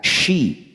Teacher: Nah, makharijul hurufnya atau tempat keluar suaranya yaitu tengah-tengah lidah bertemu dengan langit-langit mulut. Jadi bagian tengah lidah itu terangkat sampai menyentuh langit-langit mulut kita. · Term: huruf shin